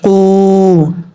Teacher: یہ قاف حروف مستعلیہ میں سے ہے، پر پڑھا جائے گا۔ اس دو نقطوں والے قاف کا مخرج اس زبان کی جڑ اوپر والے تالو کے نرم حصے سے لگے تو قاف پڑھا جاتا ہے، اور قاف کے بعد جو واو ہے یہ واو مدہ ہے، ایک الف کی مقدار لمبا کر کے پڑھیں گے۔